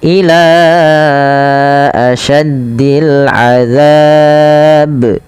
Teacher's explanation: Pada lafal ila panjangkan la-nya sepanjang 4 harakat karena ia ada bacaan mad jaiz munfasil, yaitu mad yang terjadi disebabkan karena adanya hamzah, yaitu pada lafal setelahnya.